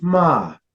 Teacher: your high falling tone